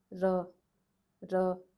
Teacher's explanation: It's not the roof of your mouth or the center of the palate, but it's more towards the front. The tip of the tongue is touching right behind the teeth, right? Not, it's not dental r, but it's still on the palate, right above the teeth, you could say, right above your teeth.